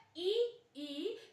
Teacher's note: दूसरी तरफ बात करते हैं ई, ई तो आपके अंदर जो जीभ है, जो जिह्वा है, जिह्वा को देखिएगा आपकी हल्की सी जिह्वा ऊपर तालू पर छू रही है।